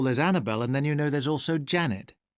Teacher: again just two stressed syllables and you see more added unstressed ones